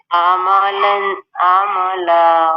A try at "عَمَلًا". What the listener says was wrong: اچھا عملن نہیں ہے یہ. عین کو اپنے وسط حلق سے ادا کرنا ہے، تو آپ نے تھوڑا سا سیدھے کمر سیدھی کر کے، تو گردن تھوڑا سا اونچا کر کے آپ دیکھیے گا. تو اس طرح سے پریکٹس کرنی ہے.